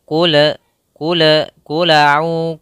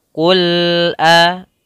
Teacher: Pada lafal qul, usahakan lamnya tidak memantul, tidak qula, qula'u, tapi dia qul al, sempurnakan lamnya.